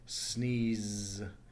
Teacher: put your finger up to your throat, and that is a voiced sound. It causes vibration there. So that means that the ending sound should be a D.